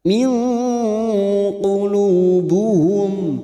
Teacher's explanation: Nun sukun bertemu qaf ikhfa hakiki. Kita samarkan bunyi nun sukun dan mendengung selama 2 atau 3 harakat.